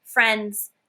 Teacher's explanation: You don't hear the D very much when you're speaking it, right?